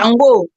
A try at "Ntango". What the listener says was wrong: C'est Ntango, c'est Kikongo, c'est Ntango. Parce que eux, ne peuvent pas prononcer le N et la nasale.